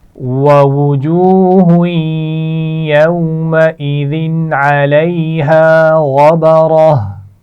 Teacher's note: ووجوه يومئذ عليها غبرة ووجوہ، دو دفعہ واو ہے تو واو ہونٹوں کو گول کرتے ہوئے ادا کی جاتی ہے، اس میں دانتوں کا استعمال نہیں کرنا، اس کا خیال رکھیے. ووجوہ، واو مدہ ہے اور پھر اگلے لفظ سے ملا کر پڑھتے ہوئے غنہ بھی کیا جائے گا. یوم، واو لین ہے، اس کو ٹھیک طرح سے ادا کیجئے.